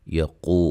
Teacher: قاف کو موٹا واو مدہ ہے